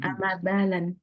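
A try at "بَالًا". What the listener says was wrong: Balan. Jangan pakai tas. Balan. tanwin.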